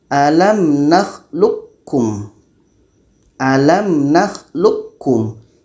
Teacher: Yang terdengar bunyi ka. Bunyi ko sudah tidak ada. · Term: idgham kamil